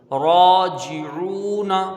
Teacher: عین با پیش عو، اس کو کھینچ کے پڑھیں گے، واو مدہ ہے ، نون کے اوپر زبر ہے، اس کو جلدی پڑھیں گے،